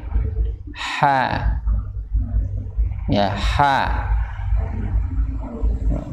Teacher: Ha itu makhrajnya ada di mana? Yaitu di tenggorokan bagian tengah bersama huruf ain